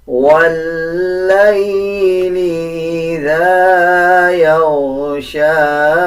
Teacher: لام کے اوپر شد ہے. لام کو واو کے ساتھ ملا کے پڑھا جائے گا اور لام پہ مضبوطی دی جائے گی